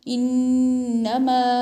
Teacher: اس کو 2 الف کے برابر کھینچ کر پڑھتے ہیں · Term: مد منفصلہ